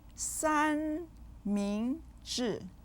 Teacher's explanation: 三 with the first tone, 明 with the second tone, and 治 with the fourth tone